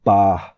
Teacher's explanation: it's between kind of like the P but without any aspiration in English so like spot